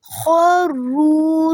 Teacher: خروا را کو 2 دفعہ ادا کریں گے کیونکہ را پہ شد ہے. واو ساکن سے پہلے پیش ہے تو یہاں پہ مد اصلی ہوگی. سجدوں جیم کو بھی 2 دفعہ ادا کریں گے، اور دال کی جو زبر ہے اس کو واو سے ملائیں گے.